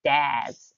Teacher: our consonant suffix s also makes that z sound, so we'll have dads, as in more than one dad.